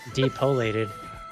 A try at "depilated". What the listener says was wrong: It's an I, but depilated. Comes to us from the Latin pilus, which means hair. And you get the D and you get the pilus.